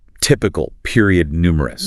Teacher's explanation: a 3-syllable da-da-da pattern, where the stress hits hard on the first syllable. Da-da-da.